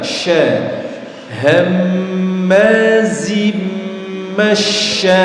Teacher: Jadi lidah bagian tengah ditemukan dengan langit-langit sya. Ketika baca seluruh mulut dipenuhi oleh udara. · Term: shin